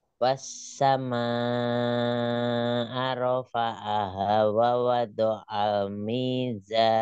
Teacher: Sofirnya za mizan. Ada desisnya.